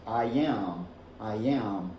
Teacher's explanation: When you say A, E, or I, you end up with this E, this smile. And then when you transition into another vowel, this just naturally appears.